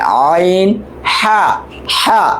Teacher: এই যে এ হচ্ছে আইন আর এ হচ্ছে হা, দুটো একই জায়গা থেকে গলার মাঝখান থেকে আসে, হলকের মাঝখান থেকে